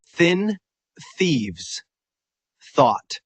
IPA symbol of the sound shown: θ